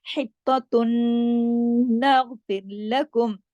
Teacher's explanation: نون پہ تشدید ہے، غنہ ہوگا بڑا